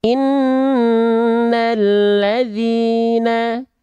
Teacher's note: gunna bacalah Nun atau mim bertasdid berwarna pink disertai dengan apa disertai dengan dengung selama dua harakat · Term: gunah